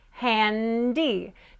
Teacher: now your n needs to explode very clearly into a D